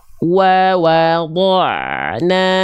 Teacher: Antara da' dengan na itu ada jembatan ain sukun.